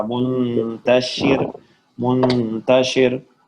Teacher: اب جرا میں را موٹا ہے, جراد منتشر را موٹا اگر وقف نہیں کرے. اگر وقف کر لیں تو ساکن ہو جائے گا, اس سے پہلے زیر ہے تو پھر کیا ہو جائے گا؟ باریک ہو جائے گا.